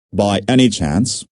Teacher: by any chance means the same as possibly notice the rising intonation